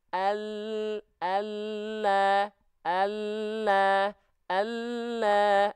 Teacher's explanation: Tapi kalau huruf lam sudah cukup ya. Kalau huruf lam dia tepi lidah bagian depan yang kanan dan yang kiri, keduanya nih menyusur sampai ke ujung lidah, disentuhkan ke langit-langit, maka bentuknya si lidahnya lebih penuh nempelnya.